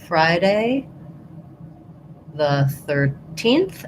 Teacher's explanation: If I say Friday the 13th, I have stress on a little bit of stress on the first syllable of Friday